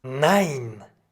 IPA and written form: naɪ̯n (nein)